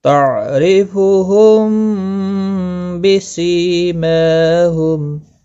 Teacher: را زیر کی وجہ سے باریک پڑھا جائے گا ، میم ساکن کے بعد با آیا ہے، اخفا شفوی ہوگا، · میم ساکن کے بعد با آیا ہے، اخفا شفوی ہوگا، گنہ کے ساتھ پڑھیں گے۔